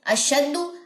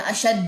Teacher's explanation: अब दाल की पेश को लंबा नहीं करना